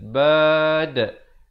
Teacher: Dan diwaqafkan dengan diberikan pantulan kerana dal merupakan huruf qalqalah. Bila mati di sini, dia jadi qalqalah kubra.